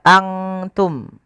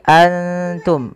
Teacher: samarkan nunnya kepada makhraj daripada huruf ta. Kalau makhrajnya misalkan ta itu makhrajnya adalah perbatasan ujung sari kita, ujung lidah kita menempelkan dengan di atas itu gusi atas dan gigi sari atasnya, ya, di perbatasannya, di ujung pangkalnya. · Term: ikhfa